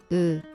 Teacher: 으 is U with mouth shape similar to I